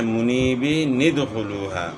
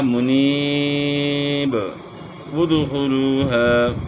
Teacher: جب وقف نہیں کریں گے تو پھر یہ نون قطنی پڑھا جائے گا ملانے کی صورت میں۔ وصل کا مطلب ہے کہ ملانا، تو ملانے کی صورت میں منیبین ادخلوہا پڑھا جائے گا جب ہم وقف نہ کریں۔